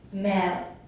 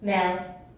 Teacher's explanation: first with breathiness on the vowel, and then without.